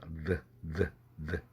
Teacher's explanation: 윗니빨 밑에다가 혓바닥을 낍니다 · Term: 설치음